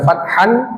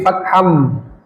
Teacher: Dimasukkan lalu didengungkan. Jadi tidak dibaca fathan tapi fatham. Jadi tanwin itu menjadi mimnya. Kemudian ada gunah dilamakan. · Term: idgham bighunah